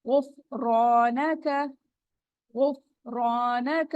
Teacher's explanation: وہ کے اوپر پیش ہے، ہونٹ گول ہوں گے، غفرانک، غفرانک، را کے اوپر زبر ہے، موٹا پڑا جائے گا، اس کے فوراً بعد الف آ رہا ہے اور را پہ زبر ہے، الف مدہ ہو رہا ہے، 2 کاؤنٹ اسٹریچ ہوگا، غفرانک، ٹھیک جی۔